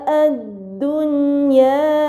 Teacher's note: Kemudian pada bacaan ad-dunya, ini dinamakan izhar mutlaq karena nun sukun dan ya berkumpul dalam satu kata, maka nun sukun tersebut dibaca secara jelas